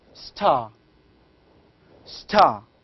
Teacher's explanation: when we say star here we do not have a strong puff this puffing is called as aspiration aspiration means the puffing of